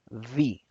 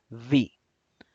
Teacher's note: la V es un sonido labiodental, es decir, vamos a unir los dientes superiores con el labio inferior.